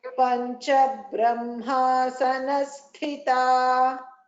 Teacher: Ba is a Panchabrahma. In this, Ba is a Alpa Prana, Tha is a Mahaprana.